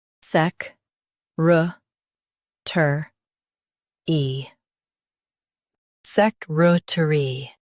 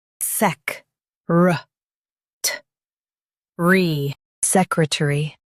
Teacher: US says tur. UK says tuh. Emphasize sec and ruh.